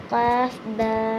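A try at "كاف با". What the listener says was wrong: قاف نہیں کاف، چھوٹی کاف، کاف با،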